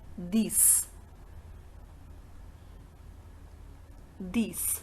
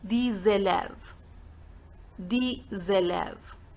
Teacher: So here we are having the sound z. In the first one the sound was s, these. In the second one the sound is z, these élèves.